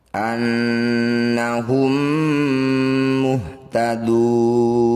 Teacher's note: mim sukun bertemu mim disebut am Mimi atau amli cara bacanya bunyi mim Pertama masukkan pada Mim dua dengungkan dua harakat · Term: idgham mimi